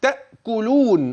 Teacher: بيان الهمز محققا في هذه الرواية، والمد العارض للسكون.